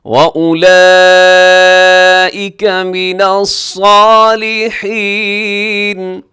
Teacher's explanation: وَأُولَئِكَ مِنَ الصَّالِحِينَ، وَأُولَئِكَ یہاں پہ جو مد ہے اسے کہا جاتا ہے بڑی مد، مد متصل اسے کہا جاتا ہے، 4 سیکنڈ تک لمبا کیجیے گا آگے۔ اس میں حروف مدہ حمزہ ایک لفظ میں ہے۔